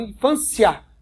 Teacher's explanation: O I é fraquinho e o A é o mais forte. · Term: Ditongo